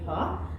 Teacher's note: তো হলো হ উষ্ণ ঘোষ ধ্বনি, আর এর উচ্চারণ এইটা উচ্চারণের সময় উন্মুক্ত কণ্ঠের মধ্যে দিয়ে বাতাস জোরে নির্গত হয় এই হ, আর এটা হলো উষ্ণ ঘোষ ধ্বনি।